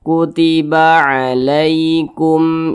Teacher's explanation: maka dibaca jelas tidak berdengung jadi jangan dipanjangkan dibaca pendek saja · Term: izhar syafawi